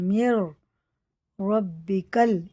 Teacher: رواں میں نون کی جگہ را رکھ کے پڑھیں گے